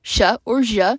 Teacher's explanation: In Lúvina, it can be realized as either post-alveolar sibilant fricative